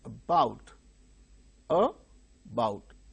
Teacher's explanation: Two syllables are there, but the initial syllable is very weak